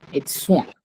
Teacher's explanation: At the end, we have a very nasal sound, wah, because of the n, which is not followed by a vowel.